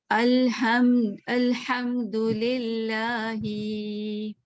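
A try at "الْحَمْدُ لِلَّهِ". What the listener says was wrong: लिल्लाही को लंबा कर दिया ना, एक अदद के बराबर।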